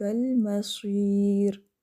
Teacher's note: را ساکن کر رہے ہیں تو پھر آپ نے باریک رکھنا ہے